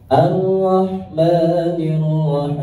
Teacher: lanjut kemudian ya ayat yang kedua, nadanya naik.